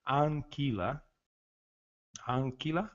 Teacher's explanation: vogal anterior a um M ou um N, nós vamos falar praticamente essa vogal bastante aberta e uma boa pronúncia do N e do M que vem logo a seguir